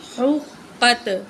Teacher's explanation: قاف کو موٹا کر کے پڑھیں گے اور ہا کو نکال کے پڑھیں گے